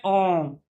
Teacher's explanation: अ कम समय लगा। आ लंबा खींचने में दुगना समय लगा। ओम इसका तीन गुना समय लगा। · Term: मात्रा